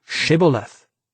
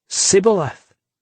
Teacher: in the ephraimite dialect initial sh sounds were always pronounced s so the ephraimite would say Sith and give himself away kiry